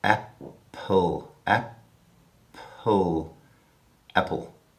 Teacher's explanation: if you don't turn off your vocal cords on the sound you get able